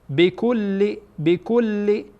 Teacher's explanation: اینجا کاف با لام وصل میشه. بکل دو تا لام تلفظ میشه